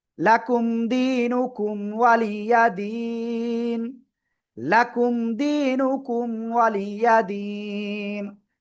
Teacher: থেমে পড়লে নুন সাকিন হয়ে যাচ্ছে, তার আগে এক আলিফ মাদ, এই জন্য আমরা 3 আলিফ টেনে পড়বো এক আলিফের জায়গায়।